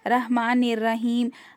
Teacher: र को मोटे से मोटा पढ़े उसको बारीक ना पढ़े ठीक है र हमेशा मोटा पढ़ेंगे जब उस पर जबर या